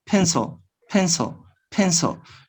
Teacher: when you speak fast quickly you don't pronounce the last vowel you just say the consonants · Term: take out the vowel